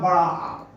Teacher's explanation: विवृत जिसके उच्चारण में मुंह पूरा खुला हो